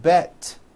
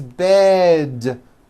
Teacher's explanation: now also remember to add voicing to words with d endings bed has a voiced d ending it's not bet with an unvoiced T · Bed has a voiced D ending. It's not bet with an unvoiced T, it's bed with a voiced D.